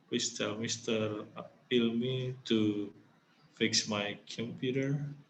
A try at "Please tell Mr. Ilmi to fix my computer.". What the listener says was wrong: Your tone is going up. Please tell Mr. Ilmi to. It should be going down. Please tell Mr. Ilmi to fix my computer.